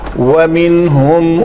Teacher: وَمِنْهُمْ, یہاں پہ منہم نہیں کریں گے کیونکہ نون کے بعد حروف حلقی میں سے ہا ہے, تو یہاں پہ نون کا اظہار ہوگا, اس کو حروف اظہار بھی کہتے ہیں.